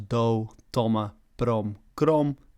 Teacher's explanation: A sound change that can be observed in certain words is that where West-Frisian has u, Klaaifrysk has o